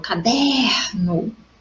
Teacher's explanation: Caderno não tem acento, mas quando eu falo caderno, aqui, ó, o der é mais forte. Paroxítona, segunda sílaba forte, sempre contando da última para a primeira, ou seja, da direita para a esquerda.